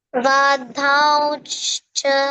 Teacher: Da you don't change to Mahaprana. Da will remain da only.